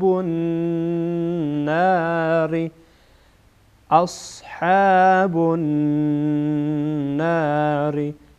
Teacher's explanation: نون مشدد غنه میشه